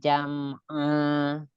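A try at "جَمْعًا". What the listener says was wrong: Jangan diputus. Disambung. Ibu, ketika ada huruf-huruf sukun yang bukan huruf qalqalah, itu dialirkan sifatnya, tunaikan sifatnya.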